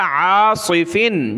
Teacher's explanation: عین کو گلے سے نکالا اور صاد کو موٹا کیا